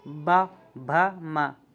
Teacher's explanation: है जिनका उच्चारण ओठों से होता है जैसे कि प फ आप देखें कि दोनों ओठ मिल जाएंगे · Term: ओष्ठ व्यंजन